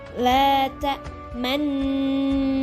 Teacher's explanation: Nah, karena di sini ada ishmam, maka nu-nya itu ya tidak dibawa. Ya, cuma dimonyongin aja bibirnya, nggak dibunyiin nu-nya